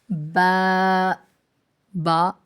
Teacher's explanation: بند ہونٹوں کے گیلے حصے سے ادا ہوتا ہے